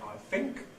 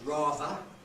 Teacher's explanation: Londoners, like British children in general, tend to front the articulation, that is, make them into F and V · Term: TH fronting